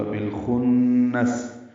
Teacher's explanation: بالخنس، با کو لام سے ملانا ہے، اظہار قمری ہے، الخنس کا حمزہ عارضی ہونے کی وجہ سے با لام سے ملا دیا گیا۔ خا نون سے ملانا ہے، نون مشدد غنہ ہوگا، خا پر پڑھیں گے، غنے میں آواز ناک کے بان سے ملے جائیں گے، اور سین ساکن پہ وقفاً ہمس ہوگا۔